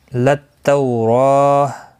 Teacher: तौ वाउलीन है, थोड़ा नरमी के साथ खींच कर अदा करेंगे। और रा के ऊपर खड़ी ज़बर है, 1 अलिफ की मिक़दार के बराबर खींच कर पढ़ेंगे।